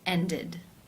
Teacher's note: Therefore, it is case 3, ended, where the ed is pronounced with the I as in sit and the d sound